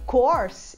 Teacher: a palavra curso se fala course com O aberto, o mesmo O que a gente usa em vovó, no final de vovó.